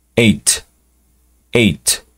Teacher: la t es como en el dos un poco escupida